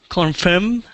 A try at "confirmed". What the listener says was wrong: make sure that if it has that Ed at the end we have to hear that little sound